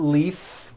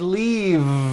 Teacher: it's not leaf with an unvoiced f I should have said leave with a voiced V sound